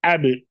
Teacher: huruf ba keluar dari kedua bibir. Ab tertutup bibirnya.